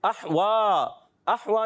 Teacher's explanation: احوا، احوا میں حمزہ کو خوب واضح کرنا ہے، ہا کی ادائیگی حلق کے درمیان والے حصے سے، اور حمزہ ادا ہوتا ہے حلق کے نیچے والے حصے سے۔